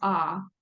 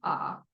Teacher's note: And then the last vowel is ah. That is a low back vowel, as in the word hot. You can feel your tongue pull kind of very far back and down when you make that sound, ah.